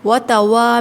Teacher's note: وتوا میں 2 کاؤنٹس کھینچیں گے، الف مدہ ہے